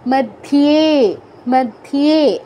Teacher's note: দেখুন কি আছে, মধ্যে ধিয়েতে দীর্ঘ করব আমরা, আর ধয়ের সাথে ইও কি হচ্ছে ধিও, এর সাথে একার ধিয়ে, মধ্যে মধ্যে বলা যাবে না বা মধ্যে বলা যাবে না, মধ্যে ইওটা যেন স্পষ্ট বোঝা যায়, খেয়াল রাখবেন। আর একার দীর্ঘ করতে হবে